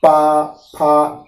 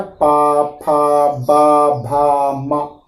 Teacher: इसके बाद पा वर्ग में ओष्ठ। अब बिना होंठ की सहायता से पा वर्ग नहीं बोला जा सकता है। पा, फा, होंठ चल रहा है ना, पा, फा, बा, भा, मा। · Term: ओष्ठ वर्ण